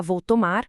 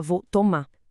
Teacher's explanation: A gente corta o começo das palavras, como em brigado, come uma vogal no meio, transformando xícara em xícara, e, talvez o mais comum de todos, a gente corta o R final dos verbos